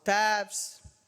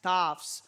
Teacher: the long sound of e stands for Latgalian long a